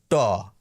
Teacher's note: দক্ষিণ ভারত বাদ দিয়ে কেউই মূর্ধায় জিভ ঠেকিয়ে আর ওই মূর্ধন্য বর্ণগুলিকে উচ্চারণ করেন না